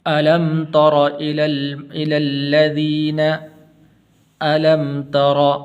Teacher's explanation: را کے اوپر زبر ہے تو اس کو پر کر کے پڑھنا ہے